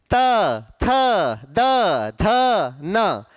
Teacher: आपकी जीभ ने क्या किया, आपके दांतों को छुआ, इसलिए उच्चारण स्थल क्या है, दंत।